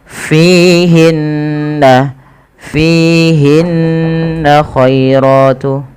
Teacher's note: Fihinna, fi mad tabi'i panjangkan 2 harakat pada lafal fi-nya karena ia ada kasrah bertemu dengan ya. Kemudian hinna ada gunnah pada lafal bacaan nun berharakat tasydid. Hukum gunnah merupakan tingkatan tertinggi dalam bacaan gunnah, yaitu ketika ada nun tasydid atau mim tasydid.